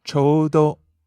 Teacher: You go up on the u in there.